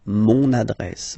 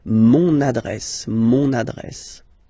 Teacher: You can hear now this little link, so you get to pronounce this N.